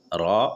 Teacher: र जबान का किनारा हल्का सा ऊपर तालू में टच करते हुए र अदा होते हैं। र बोलते समय आप देखेंगे आपका जबान का नोक ऊपर के तालू में हल्का सा सटेगा।